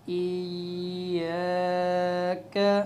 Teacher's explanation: الف مدہ کی مقدار 2 سے 3 سیکنڈ کے برابر کھینچ کر پھر وقف کرنا ہوتا ہے